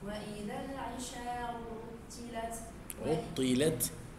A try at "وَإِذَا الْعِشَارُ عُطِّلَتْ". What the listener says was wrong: عطلت مش فيها طاطا عطلت بس التاء فيها همس غير عطلت